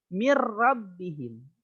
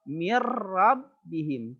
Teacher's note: Cara membacanya adalah memasukkan ke huruf di depannya tanpa disertai dengung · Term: idgham bila gunnah